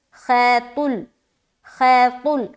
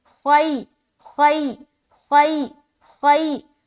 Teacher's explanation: لین کو حکم ہے کہ نرمی کے ساتھ جلد ادا کریں بغیر کھینچے